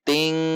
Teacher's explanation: Maka karena huruf kaf adalah huruf ikhfa, ikhfanya termasuk ikhfa adna atau ikhfa ab'ad, sehingga cara membacanya adalah didengungkan dengan menekan pada titik makhraj kaf, sehingga akan terdengar sangat mirip dengan bunyi eng, karena huruf kaf juga huruf yang tipis, tidak dibaca tebal.